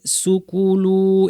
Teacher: খেয়াল করেন এখানে অনেকে আমরা রিডিং পড়তে গিয়ে সুকে লম্বা করে ফেলি